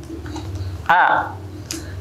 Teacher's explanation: hamzah tidak mengeluarkan suara A atau suaranya tertahan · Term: huruf hamzah